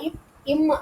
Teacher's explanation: இம்மு இந்த ரெண்டு மெய்யெழுத்துமே என்ன ஆகுதுன்னா, இரு மெய்களும் மேல் உதடு கீழ் உதடு, அதாவது 2 உதடும் இப்பு இம்மு சொன்னோம்னா 2 உதடுமே என்ன செய்யுது, அப்படி ஜாயின் பண்ணுதா, இம் அப்படி சொல்லும்போது 2 பொருந்துவதால் 2 உதடும் மேல் உதடும் கீழ் உதடும் பொருந்துவதால பிறக்குது.